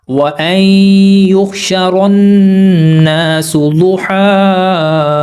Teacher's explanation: یہاں پر یہ جو یا ہے یہ پوری طرح سائلنٹ ہے، نہیں پڑھا جائے گا کیونکہ اس کے اوپر کوئی حرکت نہیں ہے، تو یہ جو ہا ہے اس کے اوپر ہم نے سانس توڑنا ہے۔ تو 2 زبر کے اوپر جب ہم وقف کرتے ہیں تو ایک زبر کو تھوڑا سا کھینچ کر پڑھتے ہیں